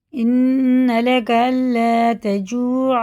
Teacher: واو ساکن سے پہلے پیش ہے، الٹے پیش کی طرح کھینچ کے پڑھنا ہوگا